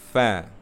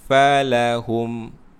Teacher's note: Fa, itu salah. Kena guna gigi atas bertemu dengan bibir bawah, bibir yang di dalam. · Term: huruf fa